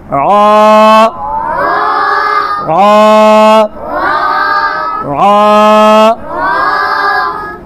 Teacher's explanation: র র র বলার সময় জিহ্বার আগার পিঠ, তাই না? ওই তালুর সঙ্গে লাগবে।